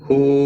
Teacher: واو مدہ ہے، ایک الف کے برابر کھینچ کر پڑھیں گے